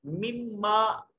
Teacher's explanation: मीम मुशद्दद है, गुन्ना वाजिब है और यहाँ इदगाम का कानून लग रहा है।